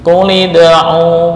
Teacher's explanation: hanya dipanjangkan 2 harokat ketika wakaf, nggak boleh lebih